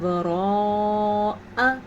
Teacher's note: یہ حمزہ آپ سے لمبا نہ ہونے پائے، یعنی زبر کو آپ کھڑی زبر نہ بنا دیں